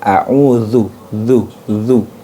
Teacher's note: Jadi ujung lidahnya bertemu dengan gigi seri atas. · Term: huruf dzal